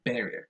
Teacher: the stress goes on the first syllable, barrier. This one varies, varies.